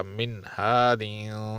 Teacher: ناک میں آواز چھپائی نہیں جائے گی اور زبان سامنے والے مسوڑوں کو چھو دے تو یہ اظہار ہو جائے گا